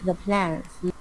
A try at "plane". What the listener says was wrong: The plane, not the plan, the plane.